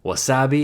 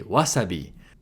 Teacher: So in English, we’ll say ‘waSAbi’ In Japanese, it’s going to be ‘WAsabi’